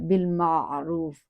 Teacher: با کے ساتھ لام ساکنہ ہے، ہلانا نہیں ہے